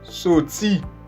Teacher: Este es un sonido fricativo sordo, en donde se arrastra el punto de articulación, como una serpiente.